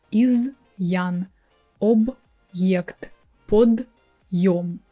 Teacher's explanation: we keep our consonant hard and we keep the original sound of our vowel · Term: hard sign